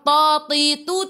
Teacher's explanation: ingat huruf ta tak ada angin